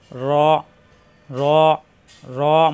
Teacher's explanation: জিহ্বার আগার fit উপরে তালুতে লাগবে